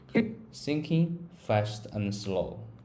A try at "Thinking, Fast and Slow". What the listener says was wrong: Try thinking, fast and slow. Put a little pause after thinking and make fast a bit punchy.